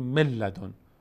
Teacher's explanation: به جای نون لام تلفظ می‌کنه حرف بعدیش رو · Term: ادغام